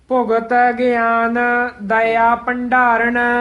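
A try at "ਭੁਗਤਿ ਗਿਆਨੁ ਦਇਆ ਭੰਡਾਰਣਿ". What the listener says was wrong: ਭੰਡਾਰਨ ਉੱਤੇ ਟਿੱਪੀ ਲੱਗੀ ਹੋਈ ਹੈ। ਭੰਡਾਰਨ ਨਹੀਂ ਕਹਿਣਾ, ਉੱਤੇ ਟਿੱਪੀ ਨਾਲ ਭੰਡਾਰਨ।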